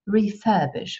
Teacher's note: interessanterweise ist es im britischen Englisch refurbish mit einem langen I